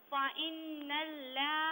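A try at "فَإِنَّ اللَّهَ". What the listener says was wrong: یہاں بھی لام کو پر پڑھنا ہے، پر پڑھیے سے.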